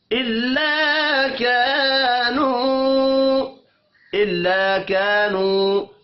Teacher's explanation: الا كانوا دو الف مدہ ہیں اور ایک واو مدہ، تینوں کو ایک ایک الف کے برابر کھینچ کر پڑھنا ہے